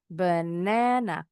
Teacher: Jadi, ada stressing the syllable di suku kata kedua. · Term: penekanan suku kata